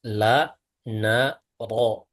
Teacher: Ujung itu bertemu dengan gusi menempel pada gusi atas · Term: makhraj huruf ro